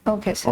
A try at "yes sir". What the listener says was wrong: And when you say yes sir, your sir is a little muted. It appears that you're saying yes. So उसको थोड़ा सा pronounce Yes sir, yes sir. know, though it's a good style, but interviewing it's better to be a little more clear about it.